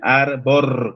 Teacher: si bien en latín se decía arbor, con R final, fíjense, la vibrante simple al final, arbor con R.